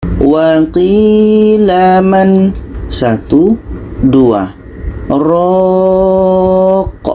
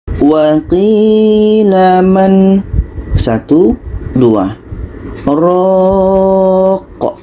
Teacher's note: Jadi pada man ini kita berhenti 2 detik, baru kita lanjutkan dengan ro. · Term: saktah